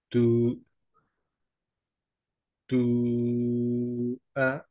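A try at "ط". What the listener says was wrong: একটু মুখটা গোল হয়ে যাচ্ছে হ্যাঁ, পু, পু, স্ট্রেট ফেস রাখবো। একটু খেয়াল রাখেন যে এইটা গোল হবে না, হ্যাঁ। যেভাবে প বললাম, সিমিলারলি তু, তুই, সিমিলার স্ট্রেট ফেস, হ্যাঁ।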